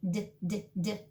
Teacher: So D is the same as a Z, right behind the teeth, D, D, D, except your voice is on.